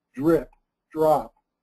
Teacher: The R is making the D sound like J, and the child is associating J with the letter G. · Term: co-articulation